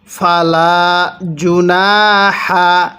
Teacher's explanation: এই হাটা উচ্চারণের সময় মুখ দিয়ে হালকা বাতাস বের করব, তাহলে হাটা সহি শুদ্ধ উচ্চারণ হবে।